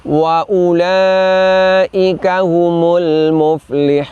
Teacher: Artinya hamzah dhammahnya selamanya dibaca pendek. Jadi semua ulaika selamanya dibaca pendek karena wawu setelah dhammahnya adalah wawu tambahan. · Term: wawu ziyadah